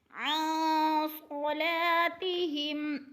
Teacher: अन सलातिहिम, अन पे इख्फा हो रहा है, नून साकिन के बाद सौद हरूफ इख्फा में से है, इख्फा करेंगे यानी नाक में आवाज़ ले जाएंगे, लफ्ज़ को छुपा कर पढ़ेंगे। अन सलातिहिम, सौद मोटे हरूफ में से है, पुर करके पढ़ा जाएगा।